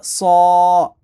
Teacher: صاد حروف مستعلیہ ہے جو موٹے لیٹر ہیں، 7 ہم سیکھے تھے، اس کو موٹا پڑھیں گے، کھڑا زبر ہے، ایک الف کے برابر کھینچیں گے۔